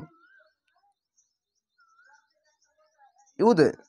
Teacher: কলকলা ধাক্কা মেরে নিচে সাউন্ড আসবে, ইয়া দাল পেশ ইউদে।